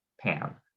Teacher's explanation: because it precedes an alveolar nasal n, then it's nasalized to pan · The velum lowering regularly in American English starts earlier than the alveolar closure does. And so we end up with temporal overlap between the vowel constriction and the velum lowering, creating a nasalized vowel